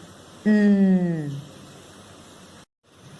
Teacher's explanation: you touch your tongue, the tip of your tongue, to the back of your teeth and you say the sound n